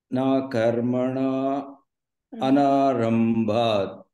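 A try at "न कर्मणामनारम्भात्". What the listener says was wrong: Close the lip. Karmanam. Say that ma no. Why is that so difficult to say a ma over there?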